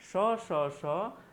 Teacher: अन्य वर्णों के तुलना में इसमें बोलने में थोड़ा सा संघर्ष हो रहा है, इसलिए इसे हम संघर्षी व्यंजन के नाम से भी जानते हैं।